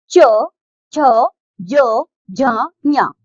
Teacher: ताल से बोले जाने के कारण इन्ह तालव्य वर्ण कहते